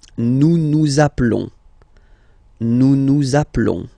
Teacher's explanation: final s doesn't exist